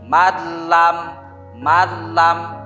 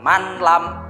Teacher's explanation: Contoh malam, asalnya ditulisannya man lam, karena harus dibaca idgham bila gunnah jadi dibaca malam. Awas, ini bila gunnah ya, jangan dengan sengau.